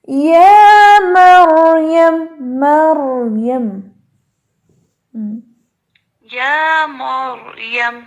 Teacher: اور آ کو ہلانا بھی نہیں ہے اور میم کو موٹا بھی نہیں کرنا